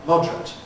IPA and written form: ˈmɒdrət (moderate)